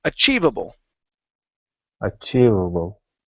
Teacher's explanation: we only want to Accent on the chi part